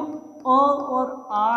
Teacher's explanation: स्वर में जो अ और आ है जिसका उच्चारण स्थान कंठ है